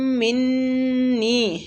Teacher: میم اور نون دونوں پہ غنہ کریں گے